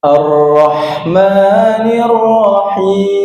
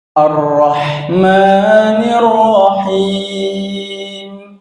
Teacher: jadi getarannya itu hanya ada dua kali nggak boleh nggak boleh lebih karena di sini roknya bertasydid kadang